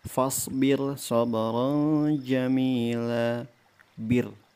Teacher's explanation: Walaupun dia bertemu dengan huruf isti'la, tetapi dia berada pada dua kata yang terpisah, maka dibaca tipis atau tarqiq.